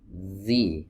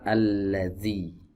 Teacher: ujung lidah di pertemukan atau digesekan dengan ujung-ujung gigi seri atas jadi seperti ini teman-teman dikeluarkan sedikit ujung lidahnya kemudian digesekan Z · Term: huruf dzal